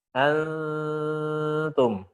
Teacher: suara akan keluar gunahnya itu suara dari khayshum dan dari al-jauf. Ini yang menjadikan kesamarannya paling tinggi. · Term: ikhfa yang a'la